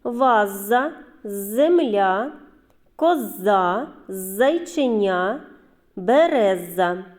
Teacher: звук з дітки це твердий приголосний у звуковій схемі позначаємо однією рисочкою